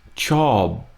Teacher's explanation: now that final bit this BP on the end here job you're going for a b but you don't let it sustain and you kind of stop it with a p